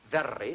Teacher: You have more than one flap. That gives a trill. For instance, when the Scotchman says very, Very, that's a trill.